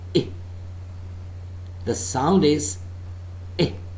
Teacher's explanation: A part of the tongue nearer to center than to front is raised just above the half-closed position. The lips are loosely spread. The tongue is lax, with side rims making a light contact with the upper molars.